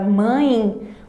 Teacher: perceba que quando nós pronunciamos a palavra mãe o som é nasalizado portanto eu vou ter a presença de uma vogal nasal e